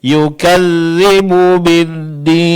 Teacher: Jangan putuskan suara antara bu dengan bi ya.